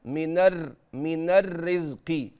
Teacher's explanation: قد يلتبس عند المؤدي فيؤدي الراء المشدده ك رائين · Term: التكرير